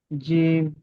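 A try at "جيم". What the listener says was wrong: আলিফ পরিমাণ টান, টানটা বেশি হবে।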